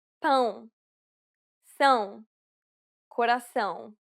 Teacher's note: the most difficult sound for Portuguese Learners to pronounce correctly um it is similar to the ow sound in English but with nasality